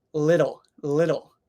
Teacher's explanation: in the middle of a word we make this sound but it's not really a D sound it's not duh it's just it's just your tongue going up and down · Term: the flap or the tap